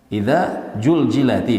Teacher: Begitu juga di Sunda biasanya zai menjadi ja ya. Idza juljilati misalnya di Indonesia, di Sunda.